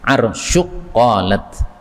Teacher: ini kan Kaf ketemu Q boleh idgham